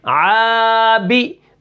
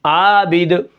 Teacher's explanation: عین الف زبر آ، با زیر بی، عابی، دال دو پیش دن، عابد وقفن عابد، آخر میں دال قلقلہ ہے، وقف بالاسکان کیا ہے میں نے آخر میں، اور با کے نیچے زیر ہے، آبی، یہاں پر ہم با کو نہیں کھینچیں گے، آگے یا مدہ نہیں ہے